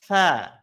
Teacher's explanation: melafalkan ts-nya ujung lidahnya harus harus keluar ya, harus nongol